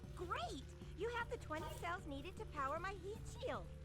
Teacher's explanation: that vocal fry in her voice on that one line is like so bad